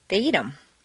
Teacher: in fluent speech, the th of them is frequently dropped